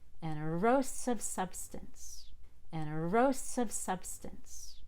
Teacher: we don't stress the E in erosive. We stress the ROS, the ROS. So it's an ero, and you get to the top on ro, not on ER.